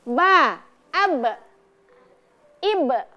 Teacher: Bertemunya antara dua bibir ba dalam keadaan tertutup sehingga keluar huruf ba.